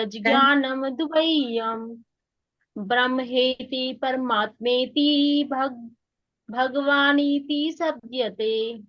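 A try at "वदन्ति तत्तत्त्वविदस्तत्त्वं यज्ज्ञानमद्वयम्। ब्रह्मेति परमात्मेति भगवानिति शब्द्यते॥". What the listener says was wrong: माता जी देखो, एक तो आपने ब्रह्मेति में गलती कर दी है, वहां पे आपने भ्रम बोल दिया, भालू वाला, मतलब कि धोखा, इल्यूजन।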